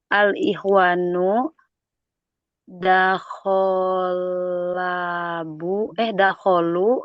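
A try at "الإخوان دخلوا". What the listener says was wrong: Betul, dakhalu.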